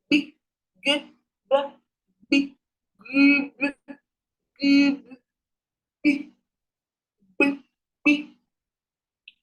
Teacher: It's called the labiovelar sound. Pronounce it with your lips and your velum.